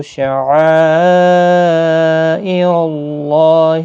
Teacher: یہاں پر مد متصل ہے، 4 الف کی مقدار کے برابر کھینچ کر پڑھیں گے